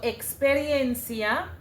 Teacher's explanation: the e x is actually translated to ks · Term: ks sound